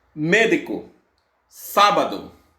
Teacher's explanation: E esdrúxulas ou proparoxítonas, palavras que têm a antepenúltima sílaba tônica mais forte